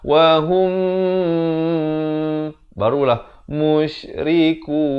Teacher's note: mim mati bertemu mim, kena dengung 2 harakat.